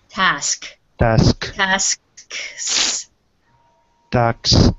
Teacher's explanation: it's so easy to migrate the S and forget about the first one, but it's more important to get the first S. Task.